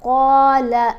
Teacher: قاف کو موٹا پڑھیں گے اور ایک الف جتنا لمبا پڑھیں گے، حرف مدہ ہے ساتھ، ٹھیک ہے۔